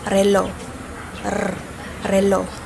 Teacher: ang paraan ng artikulasyon nito ay pakatal na may tunog